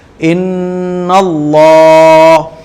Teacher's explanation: دیکھیے, حمزہ نون زیر ان, نون لام زبر نل, انل, لام کھڑا زبر لا, ان اللہ, ان اللہ. آپ کی جو زبان ہے وہ آگے والے دانتوں سے لگے گی, آگے والے جو دانت ہوتے ہیں نا یہ والے دانتوں سے لگے گی اور اللہ کا لام موٹا پڑا جائے گا. ان اللہ, ہا زبر ہا, ان اللہ.